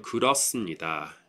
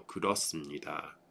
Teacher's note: The H sound goes away and it becomes a 쌍시옷